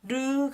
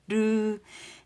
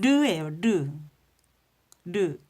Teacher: 혀 양옆으로 공기가 흘러나가면서 르가 나와요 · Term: 흐름소리